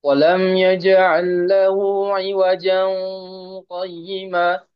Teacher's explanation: Iwajan langsung di ikhfakan karena di sini tanwin ketemu dengan huruf qaf.